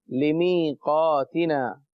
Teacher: اسی طرح لمیقاتنا، اس میں یا ساکن ہے، لمیقاتنا یا ساکن ہے کیونکہ یا کے اوپر علامت جزم موجود ہے. اور یا جب ساکن ہو اور اس سے پہلے زیر ہو تو وہاں یا مدہ ہوتا ہے، ایک الف یعنی 2 حرکات کے برابر کھینچ کر پڑھتے ہیں